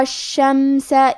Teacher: کلمت الشمس میں شین پہ تشدید ہے تو ہمیں دو حرف کے برابر شین کو پڑھنا ہے۔ آخری میں سین پہ زبر ہے، لہذا ہم زبر کو ظاہر کریں گے۔